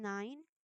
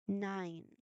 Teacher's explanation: the air is fully redirected to flow only through your nose. So it is a nasal sound.